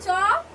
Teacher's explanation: চ এর সাথেও কিন্তু অ উচ্চারিত হয়েছে